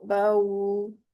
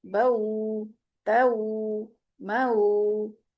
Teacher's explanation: वाव की आवाज उ की होगी। ओ की नहीं होगी। उ की आवाज होगी। बऊ त मऊ तो इस तरीके से दो हरकत जितना ही टाइम लगेगा लीन को अदा करते हुए भी। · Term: वाव लीन